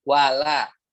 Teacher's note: Lamnya jangan ikutan tebal, jangan walad.